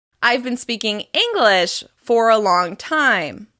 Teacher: In this example, the focus words are English and time.